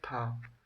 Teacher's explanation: हिंदी की स्पर्श अघोष महाप्राण दंत्य व्यंजन ध्वनि है